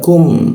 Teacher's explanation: huruf ku di siku tenggorokan, lidahnya diturunkan. Rongga udara terbuka sehingga ada hembuskan udara.